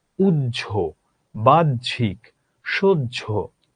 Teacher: হয়ের আলাদা করে কোনো উচ্চারণ থাকে না, তখন বর্গীয় জ উচ্চারিত হয়।